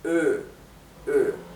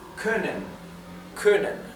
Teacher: la o umlout se pronuncia como un sonido intermedio entre una o y una u